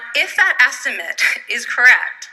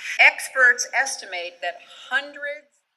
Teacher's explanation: it's the schwa sound plus t. And that happens because estimate is a noun.